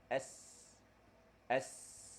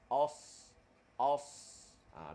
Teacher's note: 3 huruf ini, hujung lidah dia ke belakang gigi kacip bawah. Ujung lidah kita tu dia ke belakang gigi kacip bawah. · Matikan sad, os, os. Bila kita rapatkan gigi, dia akan hasil bunyi. Dia panggil bunyi safir ataupun bunyi siul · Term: Sin, Zai dengan Sad